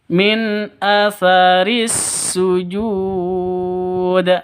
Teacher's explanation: Ada tasydidnya, maka disebut dengan syamsiyah atau idgham syamsiyah. Idgham itu masuk ya. Min atharis langsung masuk ke sin.